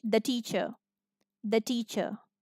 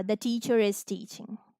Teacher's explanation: If this is in American English, a sound. In British English, it will be a, because we don't say R when it is after a vowel, unless the next word is beginning with a vowel.